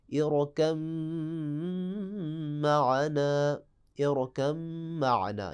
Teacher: یعنی با جو ہے وہ ادغام کی وجہ سے چھپ جائے گا ، اصل میں با کو ہم میم میں ادغام کر دیں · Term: ادغام متجانسین